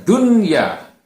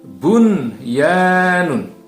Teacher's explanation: itu adalah It's her mutlak artinya dia tidak dibaca dengan mendengung ia justru tidak boleh dibaca mendengung tapi justru harus dibaca izhar atau terang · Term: izhar mutlak